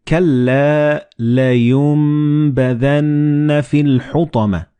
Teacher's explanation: Like in this example, you read كَلَّا لَيُنبَذَنَّ فِي الْحُطَمَةِ. So the noon and ba, they will be assimilated together and you will pronounce them as meme.